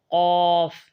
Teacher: زبان کی جڑ جب تالو کی جگہ کے لگنے سے ادا ہوتا ہے۔ قاف موٹے حروف میں سے ہے اور اس کی ادائیگی میں ہونٹوں کو گول نہیں کرنا چاہیے، یعنی کہ اس کو واضح پڑھنا چاہیے، قاف، قوف نہیں، قاف۔